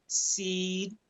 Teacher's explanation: सीन असल में दांत जोड़ के अदा होता है , जैसे सीन, और ये बारीक है, और सौद मोटा है,